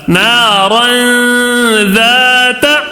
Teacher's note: غنہ ایک الف کے برابر بس غنہ کر کے پڑھنا ہے، زیادہ غنہ نہیں کرنا ہے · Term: تنوین کا اخفا